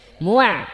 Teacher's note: আইন পেশ মু মিনাল মু মুআ বলে ঠোঁটটা গোল হবে না মিম বলার সময় ঠোঁটটা গোল হবে আইন বলার সময় ঠোঁটটা আবার স্বাভাবিক অবস্থায় চলে আসবে